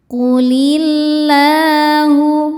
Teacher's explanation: Karena alif lam bertemu huruf syamsiyah yaitu lam. Cara bacanya alif lam lewatin tidak perlu dibaca. Langsung masuk ke lam berikutnya. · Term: alif lam syamsiyah